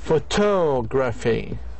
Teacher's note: primary stress is on the last syllable of the stem